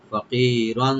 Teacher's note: ফা ওপেন রাখবেন, কি এখানে রাইট দিয়ে খালি টানবেন, আর রন আর উপরে যেহেতু তানবিন আছে এখানে আমরা ইখফা করব